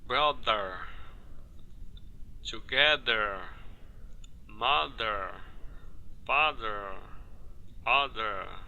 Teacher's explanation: veja que ao pronunciar o th dessas palavras você sentiu ou ou viu vibração nas cordas vocais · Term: th com vibração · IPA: [ð]